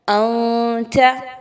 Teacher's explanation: واضح نہیں پڑھنا، مخفی کرنا ہے، ناک میں چھپانا ہے ود غنہ